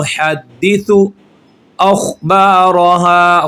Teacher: ख़ा को मोटा पढ़ेंगे, हरूफ़ मुस्तालिया में से है